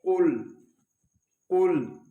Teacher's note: یہ قاف حروف مستعلیہ میں سے ہے، اس کو ہم پر پڑھیں گے، اس کو ہم کل نہیں پڑھیں گے بلکہ پڑھیں گے قل قل۔